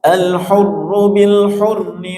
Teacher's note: Ada ra yang bertasydid di tafkhim tebal.